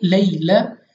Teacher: यानी या साकिन से पहले ज़बर, या लीन बगैर खींचे पढ़ेंगे